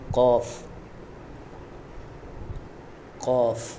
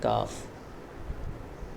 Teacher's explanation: ایک ہے موٹا قاف اور یہ ہے باریک کاف. ٹھیک ہے، اس کو قاف پڑھنا ہے تھوڑا سا موٹا کر کے، ہونٹوں کو گول کر کے